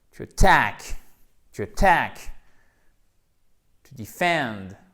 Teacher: vous avez votre petit E atténué et ici, vous avez votre A court avec un accent tonique qui donc tombe sur la seconde syllabe